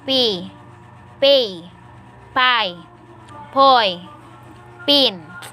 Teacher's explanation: The bilabial stops. Voiceless bilabial stop. Initial.